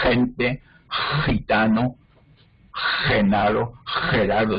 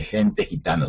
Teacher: Es una J que se llama uvular.